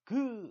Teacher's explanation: 그래서 혀 끝이 아래로 이렇게 툭 떨어지는 걸 느낄 거예요. 혀뿌리가 여린 입천장에 닿도록 만들려면 그를 준비할 때 혀 끝이 아래로 최대한 떨어질 거예요. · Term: 여린 입천장 소리